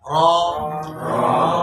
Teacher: জিহ্বার আগা উপরের দাঁতের যে আমাদের মাড়ি আছে, মাড়ির উপরে চলে যাবে